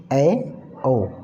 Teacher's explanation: ऐसे स्वर जिनको बोलने के लिए हमारा थोड़ा सा मुख खुलता है